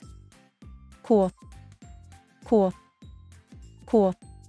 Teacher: Qu is a sound that is made by blending two sounds together, the k sound followed quickly by the w sound. Remember, the w sound is a voice glide that prepares your mouth to slide into the vowel sound that comes next. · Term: qu glide sound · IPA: /kw/